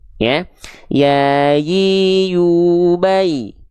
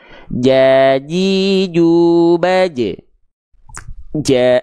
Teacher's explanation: Tengah lidah kita cukup diarahkan ke langit-langit tanpa menyentuh jadi diangkat Tengah lidahnya ke atas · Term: huruf ya